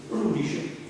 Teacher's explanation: pronunciano la D, quando noi invece a Napoli l'abbiamo trasformata diciamo, la pronunciamo R, per cui chiaramente succede questo rotagismo, per cui la D diventa R, quindi rudice, il 12. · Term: rotacismo